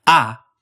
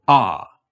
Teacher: The ah vowel is all the way at the bottom of your mouth, but further forward than English. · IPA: [a]